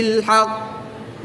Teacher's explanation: قاف حروف قلقلہ میں سے ہے اور جب حروف قلقلہ مشدد ہوں تو ان میں قلقلہ خوب جماؤ کے ساتھ کرتے ہیں